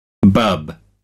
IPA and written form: bʌb (bub)